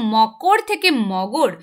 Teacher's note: এখানে ভালো করে দেখো, মকর থেকে মগর অর্থাৎ ক, এটা কিন্তু একটা অঘোষ ধ্বনি, সেখান থেকে ঘোষ ধ্বনি গতে পরিণত হচ্ছে। তো তাহলে কিন্তু এটা হয়ে যাচ্ছে ঘোষী ভবনের উদাহরণ।